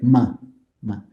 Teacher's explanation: if you use the lips and your nose you get ma so for example the labial nasal sound is the m sound